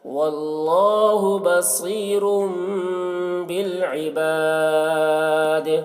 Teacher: تنوین کے بعد با ہے، اس لیے تنوین کو میم سے بدل کے ساتھ پڑھیں گے، اس کو اقلاب کہتے ہیں.